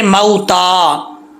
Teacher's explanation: वाव लीन की निशानी है कि वाव लीन को लंबा नहीं करेंगे, अगर कोई लंबा करता है तो गलत है।